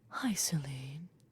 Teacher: with his very very breathy voice he said hi celine